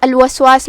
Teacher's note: یہاں لام پہ جزم ہے، یہ لام القمریہ ہے، تو ہم اسے ظاہر کریں گے